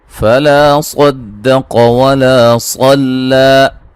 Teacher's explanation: دال صاد اور قاف کے درمیان میں ہے، صاد کو بھی موٹا، قاف کو بھی موٹا، دال کو باریک کریں گے